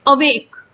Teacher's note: तो जब हम अवेक बोलते हैं तो अ की साउंड स्लो आ रही है, और वेक की साउंड ज्यादा तेज से आ रही, बहुत बलपूर्वक आ रही है. तो यहाँ पे स्ट्रेस्ड नहीं है, वेग स्ट्रेस्ड है.